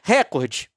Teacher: O órgão afirma que a Globo usa sistematicamente a pronúncia proparoxítona.